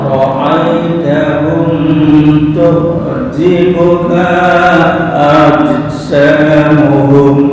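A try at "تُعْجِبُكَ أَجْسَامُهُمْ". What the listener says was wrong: Oke, ka pendek digabung langsung ke a. Tu'jibuka ajsamuhum. Ka pendek.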